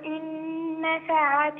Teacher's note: إن نفعت نون وبعدها نون إدغام مع الغنة